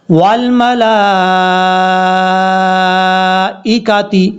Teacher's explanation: زبر ول، میم زبر ما، والما، لام کے اوپر مد ہے، اس مد کو مد متصل کہا جاتا ہے، اڑھائی الف کے برابر اس کو لمبا کرنا ہے